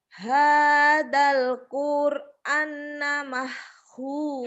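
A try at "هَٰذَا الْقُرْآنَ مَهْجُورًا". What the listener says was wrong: Hadal Qur'an. Hanya panjang.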